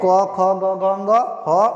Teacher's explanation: तो कंठ यहाँ गले से नीचे थोड़ा यहाँ आपको एक ऊंचा स्थान दिखाई देगा, टीला जैसा, इसको बोलते हैं कंठ। तो अ आ क वर्ग, ह और विसर्ग का उच्चारण स्थान कंठ है। अतः इसीलिए इन सब वर्णों को कंठीय वर्ण कहते हैं।